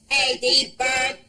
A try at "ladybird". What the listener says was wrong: Not bad, but you have a problem with the L sound. Try it again. Ladybird.